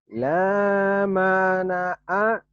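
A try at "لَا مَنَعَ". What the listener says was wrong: Yang panjang lahnya.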